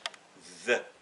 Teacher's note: Et le the, c'est une interdentale. The. Bout de langue entre les dents.